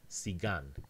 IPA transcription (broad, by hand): sigan